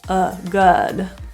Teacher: relaxing your lips into a neutral position uh uh pulling your tongue into the middle of your mouth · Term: Upsilon vowel